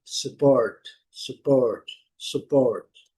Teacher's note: nesse caso é o verbo apoiar, então a segunda sílaba que é a forte. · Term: A sílaba forte